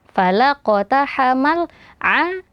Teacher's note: huruf ain keluar dari tengah tenggorokan juga